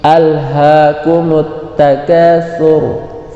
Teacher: Contoh gini, alha, hati-hati, tapi alha suaranya tebal dan dipanjangkan karena ada alifnya, hukumnya matobi. Alhaakumut, kumut ada huruf ta, maka mim itu dimasukkan ke ta.